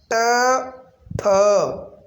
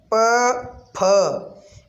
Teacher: वर्ग के पहले और दूसरे व्यंजन तथा विसर्ग अघोष ध्वनियां है